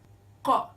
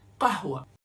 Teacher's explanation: For example, Fundo. Qaf, Qa, similar to the letter K but produced much further at the back of the throat